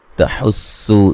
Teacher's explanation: یہاں جو ہا پہ مد اور یہ مد جائز ہے، تحسو سین کو باریک سیٹی سے